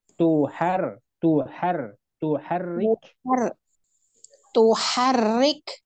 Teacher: h-nya jangan dipanjangin Bu